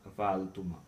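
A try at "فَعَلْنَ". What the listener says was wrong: नहीं, देखें, फालना। ठीक है, आपने एक रिदम वो चलाया 5वें तक, 6ठे पे आपने रिदम चेंज कर लिया, फाल हो गया।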